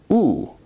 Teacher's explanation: u is a high back rounded vowel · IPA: [ u ]